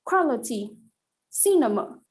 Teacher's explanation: both final and middle syllables are unstressed and the first syllable is stressed